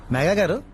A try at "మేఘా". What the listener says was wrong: మేఘా కాదు, మేఘా, ఒత్తు ఘా. పిలు.